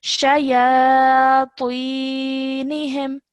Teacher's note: you're saying that with a rounded mouth, thick and heavy sound